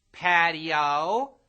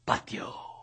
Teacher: In Spanish, the I and the O sort of blend together into one sound, making patio a two-syllable word.